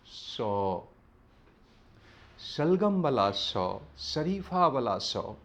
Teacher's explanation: ओहि जगह के कहल जाइ छै तालू। तालू लगसँ जखन अहाँ श के ध्वनि बजै छी तऽ शरीफा वाला स बजै छै।